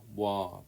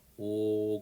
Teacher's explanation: 오 발음할 때는 입술의 모양의 혀의 위치가 변하지가 않아요.